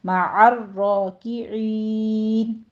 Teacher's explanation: را کے اوپر تشدید ادا کرتے ہوئے اس کو پر پڑھنا ہے، اوپر فتح قائمہ ہے. مع الراکعین، تھوڑی سی تکرار یعنی 2 ٹائم تکرار اس پر شو ہونی چاہیے